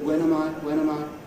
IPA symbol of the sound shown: əm